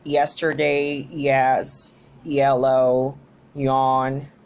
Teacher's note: it is produced when the front of the tongue it's making contact with the hard palate. We have yesterday, yes, yellow, yawn, and by its voicing, it is voiced. · By its place of articulation, it is palatal, palatal, and by its manner of articulation is an approximant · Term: palatal sound